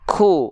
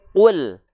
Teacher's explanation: Nggak keluar nafas sama sekali. Karena apa? Karena qaf sifatnya jahar.